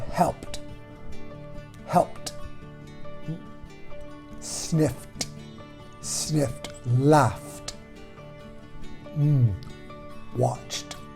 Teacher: The T sound is the one we begin with. The T sound is voiceless, so it doesn't shake.